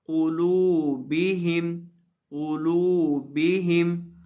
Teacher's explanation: لام کو ایک الف کے برابر لمبا کریں گے